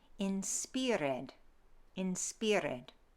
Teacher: The I sound shifts to an E sound. Okay, so instead of inspired, we say inspired.